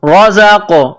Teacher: را کے اوپر زبر ہے تو را کو موٹا پڑھنا ہے · آواز پیدا کرنی ہے زا کو قاف کے ساتھ ملانا ہے قاف ساکن ہے تو یہاں پر قلقلہ کرنی ہے را زبر را زا قاف زبر زاقو رزاقو